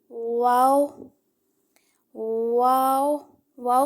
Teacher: कैसे अदा होता है होठों की गोलाई से यानी जिन चार हरूफ पर होट मिलते हैं उनमें एक वाओ · واو کیسے ادا ہوتا ہے؟ ہونٹوں کی گولائی سے، یعنی جن 4 حروف پر ہونٹ ملتے ہیں ان میں ایک واو بھی تھا، واو، ٹھیک ہے۔